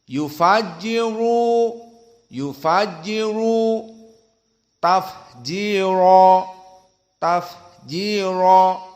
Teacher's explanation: ra di sini dalam keadaan mufakhamatan, dua yang tafkhim.